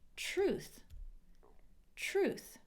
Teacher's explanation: T before R sounds like a CH